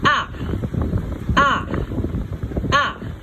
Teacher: the foot tone is a falling tone